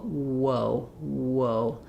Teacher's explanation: We're going from the ooh position to the uh position. The ooh my lips are more closed than they are in the o. · W is also a glide. It's basically sometimes called a semi-vowel because it's gliding between two vowel positions. So we're going from the oo position to the position. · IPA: /woʊ/